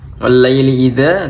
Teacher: Ada mad tabi'i juga, wal-laili idza, adanya mad tabi'i dibaca panjangnya 2 harokat